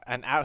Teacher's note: So the H is silent in an hour as well.